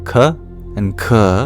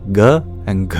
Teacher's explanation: You start with the unvoiced k and k, and then the voiced g and g